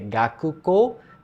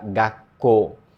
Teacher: E aqui já acontece uma questão curiosa, porque o Gaku vira Ga e Tsu pequeno, acontece uma contração, né? Acontece uma oclusão do som. O Ku vira um Tsuzinho pequeno. Em vez de ser Gakuko, vira Gakko.